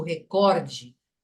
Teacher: prosódia porque se eu digo recorde estou pondo a tonicidade no cor que é então a a penúltima sílaba